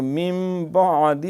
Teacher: یہ نون ساکن کے بعد با اقلاب ہوگا، میم میں بدل کے نون کو